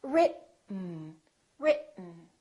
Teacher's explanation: Let the air just come out through your nose for the N sound.